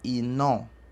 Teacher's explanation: Então, é uma vogal nasal terminada em A.